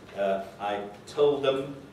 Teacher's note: Another notable elision connected with the weak forms is the deletion in informal registers of dental fricative the in words in the word them.